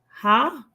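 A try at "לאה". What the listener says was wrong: Yeah, they would pronounce it le-a. So the aleph maintains the short eh sound. Correct. So the ha is not vocalized.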